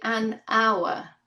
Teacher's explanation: the h in this word hour is mute. It's not pronounced.